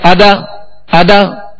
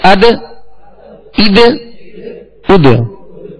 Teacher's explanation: اد، حمزہ دال زیر اد، حمزہ دال پیش اد، اد اد اد. مگر ایسا بھی قلقلہ نہیں کہ زبر پیدا ہو جائے، حرکت پیدا ہو جائے، جیسے ادا ادا، ادا نہیں کہیں گے بلکہ اد اد اد.